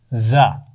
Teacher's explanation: ज़ा सीटी के साथ, सख्ती के साथ, और इसकी आवाज़ मोटी नहीं है